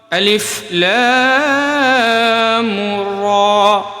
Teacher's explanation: را کو یہاں پہ زیادہ نہیں کھینچیں گے چونکہ صرف کھڑا زبر ہے را پہ